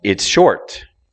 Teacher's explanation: It's always going to go low, high, low, high.